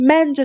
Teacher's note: Məncə sözündə vurğu birinci hecəyə düşür.